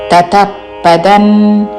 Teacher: అనుస్వారము తావర్గములోని అనునాసిక న్ ఉచ్చారణ